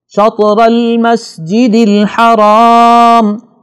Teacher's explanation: را پر زبر ہے، اس کو بھی ہم نے موٹا پڑھنا ہے